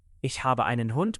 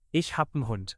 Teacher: They drop the trailing E on actions and squeeze articles down to a single letter.